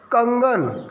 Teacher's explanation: कंगन बोलेंगे उसमें भी अनुस्वार की निशानी आती है, तो वहाँ पर न बोला जाता है।